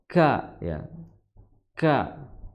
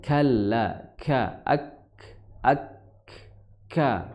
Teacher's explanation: pangkal lidah bertemu dengan perbatasan antara langit-langit yang lunak dan langit-langit yang keras. Kemudian cara mengucapkannya disertai dengan hembusan nafas. Ya, hembusan nafas. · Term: kaf